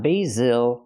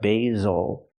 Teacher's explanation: the stress is on the first syllable not the second one